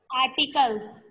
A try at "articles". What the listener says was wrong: Yes, articles.